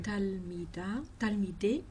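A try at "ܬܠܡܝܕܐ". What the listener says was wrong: Talmida. Il n'y a pas les deux points du pluriel. Donc, Talmida.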